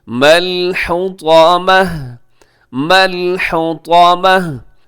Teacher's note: أَدْرَاكَ مَا الْحُطَمَةُ حُطَمَةُ یہاں بھی آخر میں گول تا ہے اور ہم وقف کرتے ہیں تو یہاں پہ گول تا کو ہا سے چینج کر دیں گے